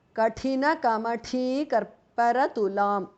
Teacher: both thas are mahapranah